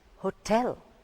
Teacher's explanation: The stress falls on the second part